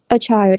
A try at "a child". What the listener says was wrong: Cứ nói thoải mái chưa, phát âm chuẩn mà.